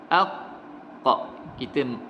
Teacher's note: Kita matikan huruf qaf, beserta dengan suara mati, suara kita terhenti dan juga nafas kita terhenti juga. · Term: syiddah